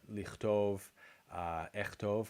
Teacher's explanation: Lichtov, the kaf becomes ch after a vowel.